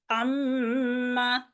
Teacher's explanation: नून मुशद्दद और मीम मुशद्दद पे गुन्ना की आवाज पैदा करनी है, 2 सेकंड के लिए आवाज को लंबा करना है, खींचना है।